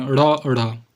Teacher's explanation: जिनके उच्चारण में जीभ पहले ऊपर उठकर मूर्धा को स्पर्श करे फिर झटके के साथ नीचे आए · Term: उत्क्षिप्त